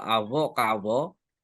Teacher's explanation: Tapi kalau avo, kavo itu bunyi frikatif bilabial